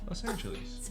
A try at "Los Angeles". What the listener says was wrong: You're saying it like a lease, like a 1-year lease. Los Angeles.